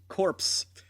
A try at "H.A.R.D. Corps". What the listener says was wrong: Well, a lot of them are corpses, but it's pronounced hardcore.